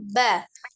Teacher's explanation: Nah, kita kembalikan ke makhrajnya lagi. Ba itu adalah pertemuan dua bibir bagian dalam ya, ba. Jadi ketika diucapkan sukun, kebetulan ba termasuk di dalam catatan yang huruf qalqalah, maka dia harus dipantulkan.